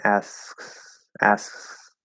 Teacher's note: super super like light almost like a half a k or you sort of bring the tongue not all the way into the k position